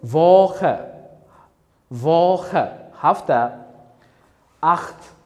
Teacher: bu kombinatsiyani biz h ya'ni qattiqroq h kabi talaffuz qilamiz